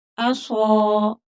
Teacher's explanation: صاد پور موٹا پڑا جائے گا، حروف مستعلیہ ہے اور تھوڑا کھینچ کر پڑھیں گے کیونکہ آگے الف مدہ ہے.